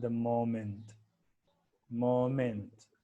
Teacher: the word moment has falling intonation and then rising intonation